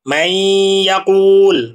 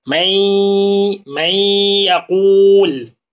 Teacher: Perhatikan di sini ada nun mati dan setelahnya ada huruf ya. Maka nun matinnya dileburkan kepada huruf ya sehingga suara keluar dari hidung dan ujung lidahnya sudah masuk kepada huruf ya. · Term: idgham bighunah